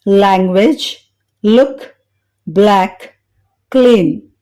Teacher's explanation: Tip of tongue అంటే నాలుక చివరి భాగం బోనీ రిడ్జ్ అంటే పై పండ్ల వెనుక గట్టి భాగంపై పెట్టినప్పుడు లైట్ ఎల్ సౌండ్ ని గమనించవచ్చు. లైట్ ఎల్ ని పలికేటప్పుడు అద్దంలో చూస్తే tip of tongue Boney ridge ని చేరుకోవడం వలన నాలుక క్రింది భాగం కనిపిస్తుంది.